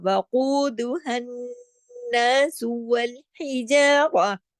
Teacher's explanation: ہاں گلے سے پڑھا جاتا ہے، حرف ہلکی ہے